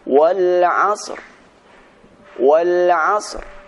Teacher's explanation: suara sad diberikan suara dengan samar-samar dan suara ra tetap dibaca dengan sempurna.